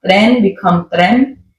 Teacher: Final N can turn into an M sound. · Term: Paisa accent